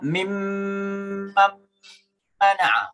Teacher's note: ada nun mati ketemu mim, yang namanya idgham bi gunnah, ya. Mim mana, jadi suara nun masukkan ke dalam nun mim.